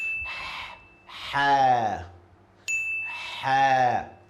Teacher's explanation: this letter is coming from your throat, middle of your throat.